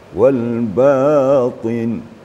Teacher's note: Jadi sebenarnya bacaan sudah bagus, tinggal lagi sifat huruf itu harus ditonjolkan seperti wal batin to ti tu. Sekaligus to itu baris bawah atau kasrah, maka sifatnya tetap itba.